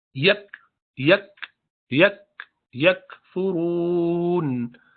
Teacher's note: یہ کاف کے بعد ہلکا سا ہمس ہوگا.